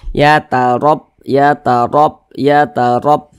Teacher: dibaca tebal huruf ra-nya, sehingga pangkal lisan kita itu naik terangkat ke atas ketika kita mengucapkannya. Huruf ra-nya kita tebalkan. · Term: tabkhim